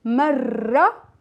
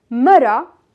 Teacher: Because if we pronounce it only with one ra, marra, here we are saying woman, a woman. Marra with long ra, it means once. Marra with one ra and short sound of ra, it means a woman.